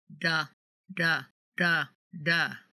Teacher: the tip of the tongue only touches the roof of the mouth toward the front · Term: single R